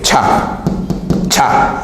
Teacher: sonido africado se da entre una oclusión, es decir, un obstáculo, y luego una fricción